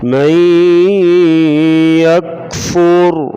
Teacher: مئی یک، فا پیش را فر، را کو بڑھ پڑھیں گے، را ساکن اس سے پہلے پیش ہو، را کو موٹا پڑھا جائے گا